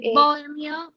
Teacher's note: Se dice bohemio. La fuerza de pronunciación está en la E. Por tanto, es una palabra grave.